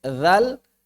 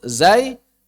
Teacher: Adapun saat mengucapkan huruf-huruf jahar, maka pita suara bergetar.